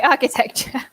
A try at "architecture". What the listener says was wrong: Your CH is more prominent than mine. Architecture.